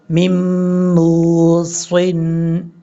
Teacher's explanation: اب اس کے بعد یہاں پر دیکھیں میم موصن، میم کے بعد نون ہے، یہاں بھی نون کو نہیں پڑھیں گے، میم کو ڈائریکٹ میم کے ساتھ کنیکٹ کریں گے